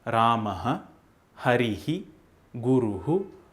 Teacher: It is not the sound Ha, which is a different consonant in itself. When this Visarga comes at the end of a vowel, the expulsion of air takes the same sound as the vowel itself.